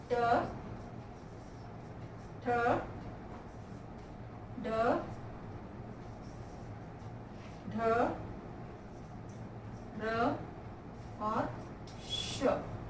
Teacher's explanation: जिनका उच्चारण तालु के मूर्धा यानी मुख का ऊपरी भाग से होता है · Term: मूर्धन्य